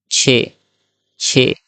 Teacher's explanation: जब हम मुंह से बोल रहे हैं छ, तो हमारी जीभ क्या है, आगे के हिस्से को टच कर रही है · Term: तालव्य